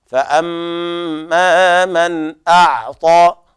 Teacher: فأما من أعطى، فأما هنا لابد أن نحافظ على الغنة في الميم، كذلك المد الطبيعي الذي بعدها، فأما من هكذا، فأما من أعطى. والنون هنا حكمها الإظهار الحلقي لوقوع الهمزة بعد النون الساكنة